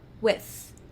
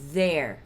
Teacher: todos esses THs aqui, eles vão ser o mesmo movimento do sem vibração, só que esses aqui a gente vai adicionar a vibração da corda vocal. Então, se esse som aqui, se no sem vibração a gente faz, no com vibração a gente vai fazer e é essa a diferença dos dois.